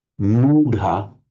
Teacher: What happens is the h, by internal sandhi, the h and the t join into a d. That's the retroflex d sound. And that often has the effect of lengthening the previous vowel as well.